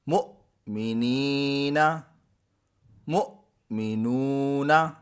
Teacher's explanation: مؤمنی جو نی ہے یہاں پر یا مدہ ہے، اور مؤمنو، نو جو ہے یہاں واو مدہ ہے۔ ایک طرف یا مدہ ہے اور دوسری طرف واو مدہ ہے، تو یا مدہ کو بھی کھینچنا ہے اور واو مدہ کو بھی کھینچنا ہے